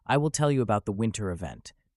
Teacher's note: the t sound in winter event is weakened, and there is linking between the words